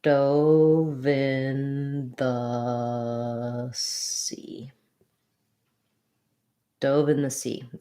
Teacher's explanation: Sea is our main stress in this phrase